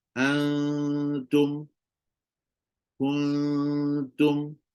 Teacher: buat Antum kuntum okey adaada tural maksudnya bila nak sebut dia hujung lidah dah pergi dah ke gusi tu ke Pangkal gigi atas tu cuma dia belum sentuh · Jadi bila dia sentuh je antum, itu adalah huruf yang izhar, bukan ikhfa. Sebab kalau ikhfa, dia mesti kena bunyi dua-dua. Dia bukan bunyi nun sahaja. Dia mesti bunyi nun dan juga ta.